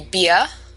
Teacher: in metropolitan New York, the rule is that when an R comes after a vowel, it's often dropped. So beer would be beer.